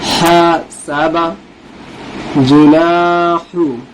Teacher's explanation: ہا کی آواز جو ہے حلق سے ادا ہوتی ہے، یہ بڑی ہا ہے